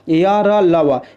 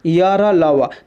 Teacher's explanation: इसका उच्चारण जीभ, तालु और दांत और ओठों के परस्पर सटने से होता है, किंतु कहीं भी पूर्ण स्पर्श नहीं होता है। अतः ये चारों अंतस्थ या अर्ध स्वर भी कहलाते हैं, य र ल व। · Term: अंतस्थ व्यंजन